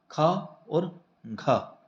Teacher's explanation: इसको बोलते समय मुख से हमारी ज्यादा वायु निकल रही है। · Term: महाप्राण